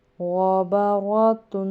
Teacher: یہاں پہ غین اور رو کو موٹا کریں گے، غین موٹا پڑھا جاتا ہے، با نارمل پڑھا جاتا ہے، رو کے اوپر اگر زبر ہو تو وہ بھی موٹی پڑھی جاتی ہے